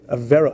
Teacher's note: I think you put the emphasis on the first syllable